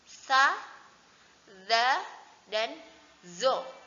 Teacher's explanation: ujung lidah dikeluarkan dan ditekan di ujung gigi seri bagian atas dan bawah. Jadi ujung lidah ini terlihat dari luar.